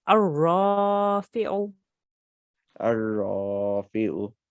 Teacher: we need to thicken the ra. We do that by making a round mouth and we say a ra.